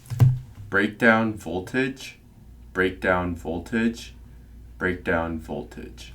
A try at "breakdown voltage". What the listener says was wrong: 네, 그래서 break down voltage. 그래서 voltage 할 때 L이 있긴 있는데 L이 이렇게 강하진 않아. Do you pronounce the L all that strong?